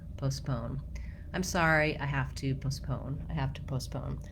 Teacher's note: In American English, you want O's in both. You just want to be shorter on the first one than the second one because the second one is stressed. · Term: second syllable stress